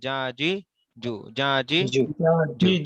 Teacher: জিহ্বার মধ্যভাগটা তালুর সাথে লেগে একদম চেপটে লেগে উচ্চারণ হবে,